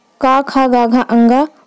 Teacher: का वर्ग को हम लोग कंठ से उच्चारित करते हैं, कंठ यानी गले से